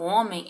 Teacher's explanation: Quando eu falo homem, eu não falo o som do H.